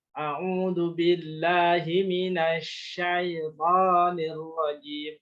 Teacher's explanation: pas nasya itu pastikan tengah lidahnya naik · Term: shin